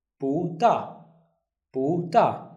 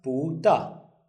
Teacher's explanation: if we have two four tones, look at this one, 不大, the first one becomes the second tone. So it will be pronounced as 不大.